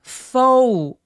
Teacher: 오우까지 느껴지게 굉장히 길게 이중모음 발음해 주시고요.